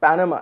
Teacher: the word panama has accent on the first syllable